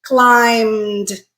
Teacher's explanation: we're going to create a consonant cluster at the end with a m and d